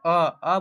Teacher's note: जो आपका ओठ है ओठ वो पूरा गोल नहीं होगा। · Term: आवृतमुखी